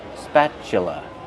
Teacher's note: Spatula. Use the short ass sound like black cat, spa, plus the ch sound like chicken.